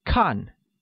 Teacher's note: which is pronounced with a falling tone